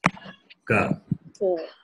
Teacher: when you pronounce the letter, ka, the amount of the expulsion of air is less. Ka. Whereas the second letter, ka, when you say, you expel more air. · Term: non-aspirate